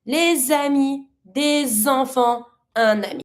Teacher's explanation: you pronounce your word, the first one, the way it's supposed to be, and then you repronounce the last consonant with the following. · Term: French liaison